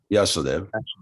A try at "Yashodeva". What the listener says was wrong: No, actually, the O is longer than the first A because it's a diphthong. It's a double vowel, but I won't get into all the phonetics.